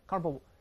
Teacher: 但注意重音在前面